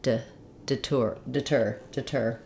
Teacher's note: when we have the word deter our stress falls on the second syllable tur that means that the letter de rather than saying de like · rather than saying de like in De or death they will have a reduced vowel it sounds like I it's the same vowel sound we have